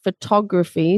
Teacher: So the stress is on the tog, not the foe.